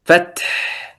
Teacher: لا يبقى من الحرف الحاء إلا الصفة، إلا الهمس